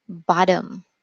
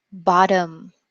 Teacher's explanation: Can you hear that the T becomes more like a D? It's between a T, a full T, and a D sound. D, D. This is why we call it a morphing T, because it changes.